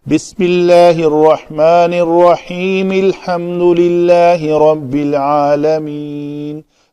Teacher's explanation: تو الف کی زبر کو میں نے نہیں پڑھا چونکہ یہ حمزہ وصلی ہے